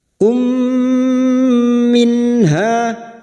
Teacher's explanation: mim sukun bertemu mim Idam Mimi bertemunya mim sukun dengan mim memasukkan bunyi mim sukun kepada mim berikutnya disertai mendengung selama tiga harakat